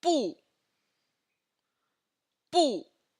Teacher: Bu in the fourth tone means no.